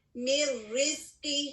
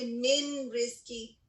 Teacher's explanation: یعنی یہاں پر نون ساکن را میں مرج ہو جائے گا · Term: ادغام بغیر غنہ